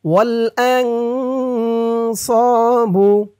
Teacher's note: স একালিফ টান, জবরের পরে খালি আলিফ